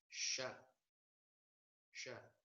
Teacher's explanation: Dan huruf sa yang ada titiknya itu dibaca kalau dihurufkan S, Y, A. Nah, bunyi huruf keluar dari tengah-tengah lidah dan menepati langit-langit mulut di atasnya.